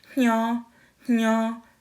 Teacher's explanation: you can hear the nasally N and then the Y come in and then the O